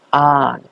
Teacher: a ini adalah mad badal. Dibaca panjangnya 2 harokat, yaitu A. Ini karena ada huruf mat bertemu dengan hamzah, tetapi huruf mat ini didahului dengan huruf hamzah.